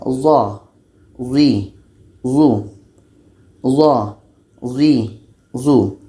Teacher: zo ini letaknya pada ujung lidah menempel dengan ujung gigi seri atas. Ujung lidah menempel dengan ujung gigi seri atas.